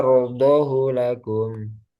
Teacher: pada kata yardhahu lakum tidak dibaca panjang menurut riwayat Hafiz